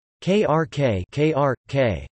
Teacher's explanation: In Czech and Slovak, either [l] or [r] can stand in for vowels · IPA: [kr̩k]